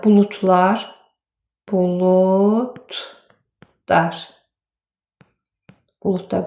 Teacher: D t kimi tələffüz olundu. Lar da dar kimi tələffüz olundu. Nə üçün? Öz lardan əvvəl d gəlib.